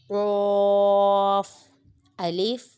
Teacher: اس کو ہم ہر حالت میں پر یعنی موٹا پڑھیں گے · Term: حروف مستعلیہ